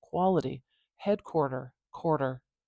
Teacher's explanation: do you hear how that's almost like a really quick D sound it's not truly a d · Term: tap